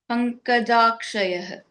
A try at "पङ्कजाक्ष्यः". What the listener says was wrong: No, you're saying Jaksha. It's ik should be. Pankajakshah. I think it's Pankajakshah. Just Jakshyah, not Jakshayah. Okay, yeah, just iksh, not a full ksha.